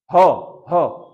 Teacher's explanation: ह ह बोलते हो तो क्या, गले में वाइब्रेशन होता है ना, तो वो कौन सी है, सघोष ध्वनि है, समझ गया ना, इसलिए ह नहीं आया।